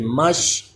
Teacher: شین میں کلکلا بھی نہ ہو یعنی میم مش ہا دن مش ایسے نہیں پڑھنا بلکہ مش شین کی آواز وہیں پہ رک جائے